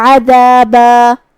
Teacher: عین کو ہم حلق کے درمیان والے حصے سے ادا کریں گے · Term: حرف العین